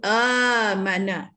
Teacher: Tapi ditukar hamzah kedua tu ditukar menjadi huruf mat, maka dibaca dengan panjang dua harakat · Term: mat badal